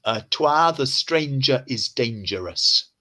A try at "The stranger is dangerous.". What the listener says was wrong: Perfect.